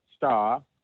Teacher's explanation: on the word star they'll drop that R